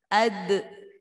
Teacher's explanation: Qalqalah itu mantul. Ketika ada huruf dal disukun, maka harus ada e-nya, ada mantulnya. Ad, jangan ad ro, tapi ad pakai e-nya ya.